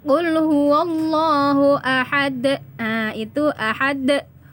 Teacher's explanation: Huruf dal termasuk salah satu dalam huruf qalqalah dan dia berada di akhir, maka pantulannya besar atau disebut dengan qalqalah kubro.